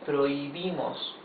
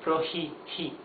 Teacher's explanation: You don't pronounce the H. It has no sound, not even the soft sound that it has in English. In English you would say prohi, he. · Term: H is totally mute